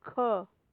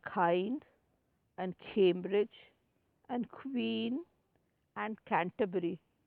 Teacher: But when we have vowel sounds, what is happening? The back of the tongue is against the soft palate.